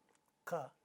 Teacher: is an alveolar sound and ka is a velar sound but they are all voiceless stops there is no voicing in each one of them